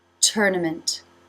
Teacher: Lips together for the M, tongue up for the N position and the T